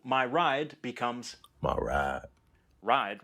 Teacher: in aave it's just one continuous vowel sound